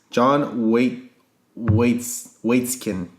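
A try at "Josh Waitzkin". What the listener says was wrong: John. It's Josh.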